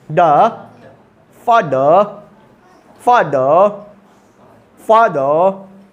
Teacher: Tip of द tongue को अपने मसूड़े में यानी टीथ रीज में लगाओ और द निकालो, जो निकलेगा वही है द अंग्रेजी का।